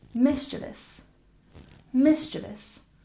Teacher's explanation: we stress the first syllable and we generally try to keep it to three syllables